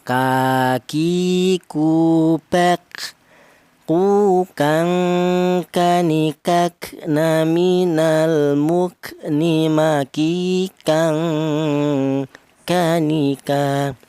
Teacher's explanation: Untuk huruf kaf ini keluarnya huruf berasal dari pangkal lidah ya. Pangkal lidah ada 2 huruf, yaitu huruf kaf dan huruf qaf ya.